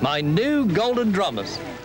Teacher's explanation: Many speakers in this eastern region of England can have yod dropping after all consonants, not just the alveolars.